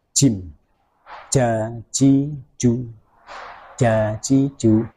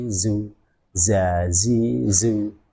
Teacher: kalau Jim itu berada di tengah lidah kalau Za itu berada di ujung lidah caranya bagaimana ujung lidah kita tempelkan ke tempat pertama tumbuh gigi